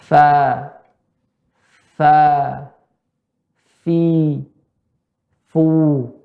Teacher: perut bibir tadi bertemu dengan ujung gigi seri bagian atas